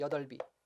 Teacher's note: 자, 뒤에가 이가 왔으니까 받침 비읍을 그대로 연음하면 뭐가 돼요? 뒤에 받침만 연음하니까 여덜비가 되는 거죠.